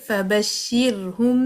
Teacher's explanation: आपके हंठ मीम के लिए बंद हुए लेकिन जब खुले तो वहां से फिर बा की अदायगी होगी